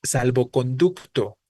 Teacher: primer componente de las compuestas sin guion pierde su sílaba tónica no va a sonar fuerte en salvo va a sonar fuerte en conducto